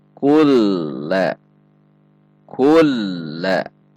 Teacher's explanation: nun sukun dilebur dan masuk ke huruf lam atau diidghamkan. Idgham dimasukkan ke huruf lam. · Idgham dimasukkan ke huruf lam. Idghamnya tidak dengan dengung atau idgham bila gunnah, sehingga dibaca bukan kun namun dibaca kul. Jika di mushaf Depag ada tanda tasydid pada huruf lam.